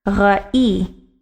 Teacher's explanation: The emphasis is going to be on the second syllable.